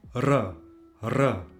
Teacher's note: this is always pronounced trilled like R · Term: double R